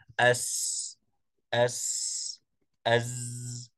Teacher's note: مرور هذا الحرف هذا المخرج في مجرى ضيق فننتبه عندما نقول نلاحظ ان مخرج الحرف متضيق لذلك يخرج صوت الصفير اس اس اس اس اس اس هذه الحروف الثلاثه تتصف بالصفير